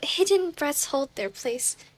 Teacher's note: the alliteration of the H sound because it sounds a bit like huffing, like breathless